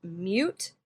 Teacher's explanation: So the word mute has that little Y in there. We could call it moot.